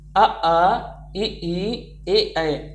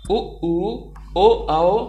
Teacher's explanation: जिन स्वरों के उच्चारण में होठ वृत्तमुखी या गोलाकार नहीं होते वो अवृत्तमुखी हैं। वृत्तमुखी, जिन स्वरों के उच्चारण में होठ गोल हो जाते हैं, मतलब वृत्त के समान हो जाते हैं, उन्हें हम कहते हैं वृत्तमुखी।